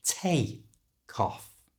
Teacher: we can connect these two words together and we do that by moving the C sound from the end of take to the front of the O in off so take off becomes T cough and at a more natural